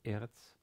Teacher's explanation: Eretz has stress on the first syllable, eretz, and again starts with an aleph and has an e, a segol vowel under it, then a resh with a segol under it, and finally a tzade.